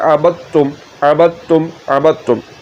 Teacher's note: دال کو آپ نے تا میں ملا دینا ہے، دال کی آواز ختم ہو جائے گی